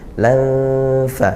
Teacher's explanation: Lam fa, tanwin bertemu fa, sama ini ya, bertemu fa juga, makhrajnya di perut bibir ya, dari ujung gigi seri atas ke perut bibir. Lam fa didengungkan, samar ya, samar-samar ke nunnya, samar-samar ke fa-nya juga.